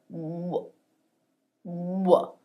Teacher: lips form a tight Circle and we have this voiced component down here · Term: W sound